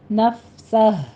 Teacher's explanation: ہمس کرتے آگے ہا کی آواز بھی آپ نے باہر نکالنی ہے